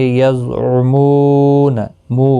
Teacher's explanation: واو مدہ ہے، ایک الف کی مقدار کے برابر کھینچ کر پڑھیں گے، نہ کو کھینچنا نہیں۔